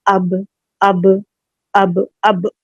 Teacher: گا, 2 count کھینچیں گے, با منہ کھلے گا پورا, اور با کے لیے دونوں جو ہونٹ ہیں اپنے ان کے ویٹ پارٹس ملیں گے , اندر کے جو ویٹ پارٹس ہیں وہ ٹچ ہوں گے.